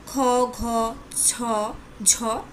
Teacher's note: প্রত্যেক বর্গের দ্বিতীয় ও চতুর্থ ধ্বনির উচ্চারণকালে বাতাসের চাপের আধিক্য থাকে বলে এদের মহাপ্রাণ ধ্বনি বলে